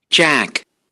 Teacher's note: in Jack we have higher frequencies in second formant, so it's a front vowel. Jack, Very front vowel.